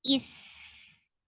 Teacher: hamza is a very sharp sound. It should be this pinchy, pointy sound.